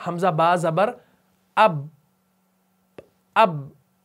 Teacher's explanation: मैं होंठों को उठा नहीं रहा बल्कि मैं होंठों को सिर्फ चिपका रहा हूं। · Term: तसादुम